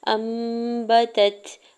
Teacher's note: انبتت، حمزہ کے زبر کو نون ساکن کے ساتھ ملاتے ہوئے اوپر چھوٹی سی میم ہے اور اگلا حرف با ہے، تو یہاں پہ اقلاب کا رول اپلائی ہو رہا ہے، تو نون ساکن کی آواز کو میم میں بدل کے پڑھیں گے، یعنی یہاں پہ ان نہیں پڑھیں گے، ام پڑھیں گے